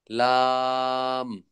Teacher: ৮ নম্বর মাখরাজ, জিহ্বার আগার কিনারা সামনের উপরের দাঁতের মাড়ির সঙ্গে লাগাইয়া